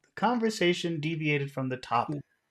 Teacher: you want to start high and then go low